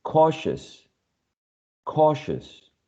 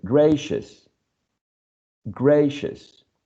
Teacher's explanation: Before we continue, there's also the presence of a schwa in this last syllable, all right? So we never pronounce u or o or e, it's just a schwa.